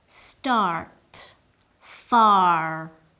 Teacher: In American English, words like start and far maintain the R sound